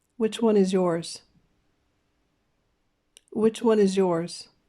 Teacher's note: remember that wh questions go down and sound like a sentence